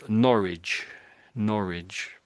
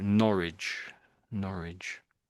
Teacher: So, the W's silent, I would say, really.